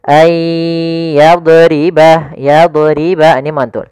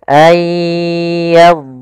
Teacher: pada lafaz dhad di sini dhadnya tidak boleh memantul. Nah, kesalahan yang terjadi adalah memantulkannya.